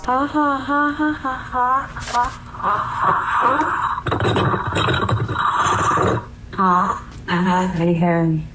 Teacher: Alexa repeats the words back in a small voice that quickly becomes breathy and scary with gasping noises